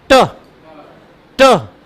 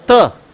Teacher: ट में ठीक थोड़ा ऊपर चढ़ गई और त में नीचे आ गई